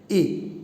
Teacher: ए बोलने पे हमारा मुख पूरा नहीं खुल रहा है और न ही आधा खुल रहा है, बल्कि क्या हो रहा है, मुख बंद है, लेकिन कैसा बंद है, आधा बंद है ए, ठीक है।